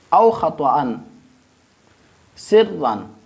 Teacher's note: یہاں پہ جو را ہے اس پہ چونکہ دو زبر ہے لہذا ہم اس کو بھی موٹا پڑھیں گے